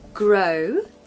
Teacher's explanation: you really want that to sound very round like the letter O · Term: alphabet o